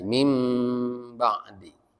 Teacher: selain mengganti huruf dari bunyi Nun menjadi mim itu ada ikhfanya juga ada denggungnya ya jadi mim ba'di jadi ditahan nah yang terakhir ikhfa ikhfa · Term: iqlab